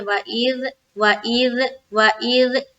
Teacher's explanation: حمزہ کو زال سے ملانا ہے اور زال پراپر طور پر ادا کرنا ہے